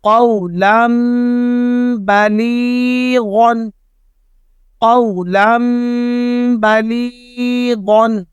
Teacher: یعنی نون ساکن اور تنوین دونوں کو میم سے بدل دیں گے اور غنہ بھی کریں گے